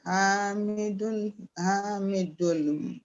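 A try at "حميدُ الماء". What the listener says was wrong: Hamidu nil ma'a. Hamidu du. Hamidu. Hamidu. No, not dul. Only say do, not dul. Hamidu nil ma'a. Hamidu nil ma'a. Nil nil ma'a. Iltika ussakinain.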